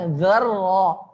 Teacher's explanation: za tipis ra tebal